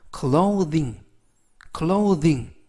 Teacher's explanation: th가 돼지꼬리 발음일 때 이번 단어처럼 돼지꼬리 발음일 때는 유성음이기 때문에 성대의 울림을 하시면서 발음을 하시면 되겠습니다